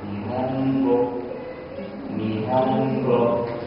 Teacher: But this mora carries just 1 sound, n. So you've got to pronounce that n with the same amount of time that the other moras. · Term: mora system